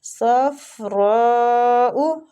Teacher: रा की मद को खींचेंगे तकरीबन 4 अलिफ, मद्दे वाजी मुतसिल हो रही है